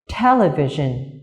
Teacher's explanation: television. Trọng âm của từ này rơi vào âm tiết thứ nhất